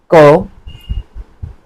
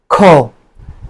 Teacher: দ্বিতীয় ধ্বনিটা হলো মহাপ্রাণ এটাকে একটু বাতাসের চাপ দিয়ে উচ্চারণ করতে হয়